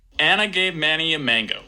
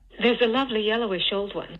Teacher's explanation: this H star has a higher f0 than the ones that follow it in fact they keep going down further and further down and f0 as they reach the end of the phrase and I gave Manny a mango like walking down a set